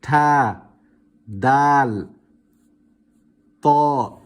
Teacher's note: These letters originate from the tip of the tongue when touching the roots of the central incisors, when touching the roots of the central upper incisors.